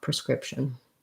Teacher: pretty much is entirely a unstressed reduced vowel in the beginning with that schwa